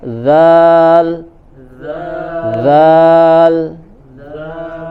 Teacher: Ya, sudah kita bahas juga di bagian makharijul huruf sebelumnya, yaitu caranya makhrajnya adalah ujung lidah ditempelkan ke bagian ujung gigi seri bagian atas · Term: huruf lasawiyah